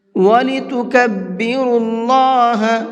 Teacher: اللہ کے لام سے پہلے پیش ہوتا ہے تو وہاں پر اللہ کے لام کو منہ بھر کے پڑھتے ہیں